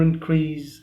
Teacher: So increase, in the word increase there are two syllables. We don't stress in, but we stress c.